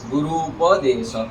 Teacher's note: छोटी ऊ है, यहाँ पर भी ऊ है, दोनों ऊ मिलके ऊ हो गया। चाहे छोटे दोनों हो अथवा बड़े हो, दोनों अक्षर छोटे छोटे मिलने पर भी बड़े हो जाते हैं और बड़े छोटे मिलने पर भी बड़े।